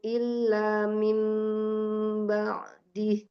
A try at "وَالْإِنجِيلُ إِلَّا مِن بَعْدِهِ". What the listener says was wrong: Di lu-nya itu tidak terpisah. Lu-nya juga tawassut. Terlalu tajam di lamnya. Illa gitu aja. Wal injilu illa min ba'dih. Lu illa gitu. Nah, memang ada ketergantungan ya, ada hubungan antara pengucapan huruf satu dengan huruf yang lainnya gitu ya. Kenapa lu-nya Umi terlalu dalam seperti terpisah dari hamzahnya, ya kan? Karena Umi ambil untuk mempersiapkan ambil ancang-ancang seperti menekan lamnya, illa gitu kan. Jadi lu-nya terlalu tajam.